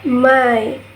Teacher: This goes from a to e.